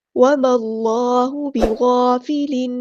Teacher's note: ساتھ ملا دینا ہے، حمزۃ الوصل ہمارا ڈراپ ہو جائے گا، اللہ کا جو لام ہے وہ ہم پورا ادا کریں گے، اس میں دلالہ تفخیم ہو رہا ہے ، ہاں کو ہم نے جو ہے وہ لمبا نہیں کرنا،